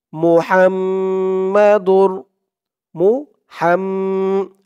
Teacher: হাম বলে আবার গুন্নাহ করতে হবে, ওয়াজিব গুন্নাহ